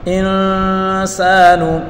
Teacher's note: کو نون کے ساتھ ملا کر پڑھیں گے، نون ساکن ہے، نون ساکن کے بعد سین حروف اخفا ہے، تو یہاں اس نون میں بھی گنہ کر کے پڑھیں گے